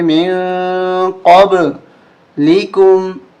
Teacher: یہاں اخفا کریں گے، میم، ناک میں آواز چھپائیں گے